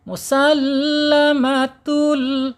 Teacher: Penekanan di huruf lam. Ingat penekanan di huruf lam karena lam bertasyid ya supaya dia mempunyai karakter yang jelas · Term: lam bertasydid